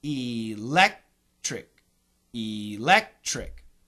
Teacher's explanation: Now, in that three-syllable word, the second syllable is stressed.